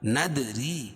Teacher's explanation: دال پر قلقلہ کیونکہ یہ حروف قلقلہ کے 5 حرفوں میں سے ہے اور ان پر جزم بھی ہے.